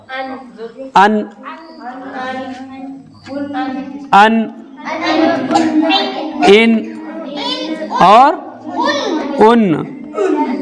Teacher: नून का मखरज ज़बान का किनारा और ऊपर के सामने के एक नुकीले दांत से दूसरे नुकीले दांत के मसूड़ों से अदा होता है।